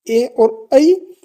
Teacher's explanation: ए और ऐ ये हैं कंठ और तालु से बोले जाने वाले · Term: कंठ तालु